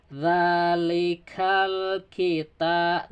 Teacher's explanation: alif lam menghadapi kaf. Berarti kaf ini huruf qamariyah. sehingga lamnya terdengar jelas. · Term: alif lam qamariyah